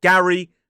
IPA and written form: ˈɡæri (Gary)